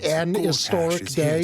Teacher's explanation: you are of the accent that doesn't pronounce the H